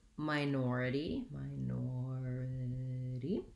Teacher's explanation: series that end with this so minority has second syllable stress the first syllable sounds like my it has the diphthong i